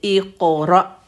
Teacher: یہ ہیوی والا قاف ہے، جب ساکن ہوتا ہے تو کلکلا کرتا ہے، باؤنس بیک کرتا ہے، اق ایسے۔ تو اس کا مخرج آپ دیکھ رہے ہیں، جو زبان کی شروع میں چھوٹا سا گوشت کا پیس لٹکا ہوا ہے، اس کو کوا کہتے ہیں۔